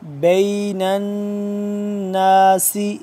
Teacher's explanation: نون مشدد ہے، اس پہ ہم غنہ کریں گے